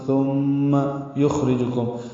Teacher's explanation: خا ساکن پہ ہمس ہے، را باریک ہے